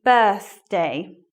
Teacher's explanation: tip for making the sound is you put your tongue between your teeth and it's it's kind of whistle e sound without the fur